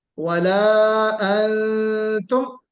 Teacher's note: यानी मुकम्मल आवाज नाक में, नाक के बासे में छुपाकर निकाली जाएगी। ठीक। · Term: इख्फा हकीकी